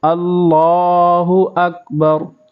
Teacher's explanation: اللہ کو کھینچیں گے کیونکہ لام کے اوپر کھڑا ہے